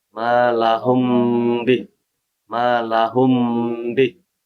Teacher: menggunakan huruf mim serta dipanjangkan dua harakat atau dua ketukan · Kalau mim mati bertemu dengan ba jadi ikhfa syafawi. Cara bacanya dengan menggunakan huruf mim serta dipanjangkan 2 harakat atau 2 ketukan. Di 2 harakat juga.